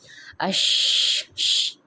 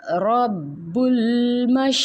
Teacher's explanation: ہم زبان کے جو درمیانی حصہ ہے اس کو جب اوپر کے سخت تالو سے لگاتے ہیں تو وہاں سے شین کی ادائیگی ہوتی ہے. لیکن جو شین کی صفت یہ ہوتی ہے کہ اس میں پھیلاؤ ہوتا ہے، ٹھیک ہے، آواز میں اش ش، دیکھیں یہ اش، یہ والی ادائیگی ہونی چاہیے.